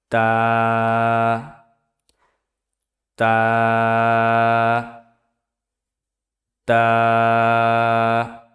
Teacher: তা উচ্চারিত হয় জিহ্বার আগা সামনের উপরের দুই দাঁতের গোড়ার সঙ্গে লাগাইয়া উচ্চারিত হয় তা